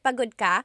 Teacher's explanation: Sometimes you don't have to add the word ba. You can just change the intonation of your voice